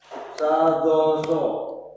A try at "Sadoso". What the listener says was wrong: Coba temponya agak dicepat sedikit ya. Sadoso. Sadoso.